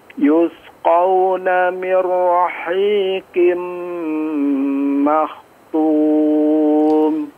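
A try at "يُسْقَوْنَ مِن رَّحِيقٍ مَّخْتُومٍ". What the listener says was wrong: Yusqawna, di situ huruf sin ya. Jangan terlihat tebal ya, atau jangan menebal ya sehingga terdengar seperti shad ya, atau condong ke shad. Kemudian di kha-nya makhtum, makhtum diperjelas dan dipertebal lagi huruf kha-nya.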